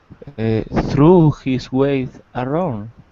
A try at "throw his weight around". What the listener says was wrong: More of an O sound though. Throw his weight around.